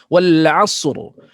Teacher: Ra mesti dengar macam qadar. Ni sebab sad ni dia nafas dan dah ada safir siulan.